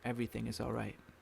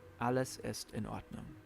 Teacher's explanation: In German, sometimes there's a mini pause before each individual word.